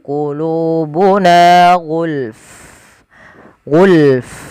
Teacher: jangan cuman gul, tapi fa-nya juga ikut mati ketika kita waqaf